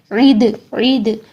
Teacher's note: عین کو آپ حلق کے درمیان سے نکالیے. اگر آپ کا عین نکالنا مشکل ہے تو آپ وامٹ ساؤنڈ ہوتی ہے عی عی، اس طریقے سے نکالیے.